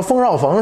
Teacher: 和河南的中原官话唯一的不同就是音频一声调是拐弯的